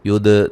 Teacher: دال کو ہلا کے پڑھیں گے، دال پہ قلقلہ کریں گے